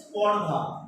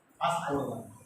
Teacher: দ্রুত উচ্চারণের ফলে বা উচ্চারণের সুবিধার জন্য কোনো শব্দের আগে যদি কোনো স্বরধ্বনির আগমন ঘটে তাকে আমরা আদি স্বরাগম বলি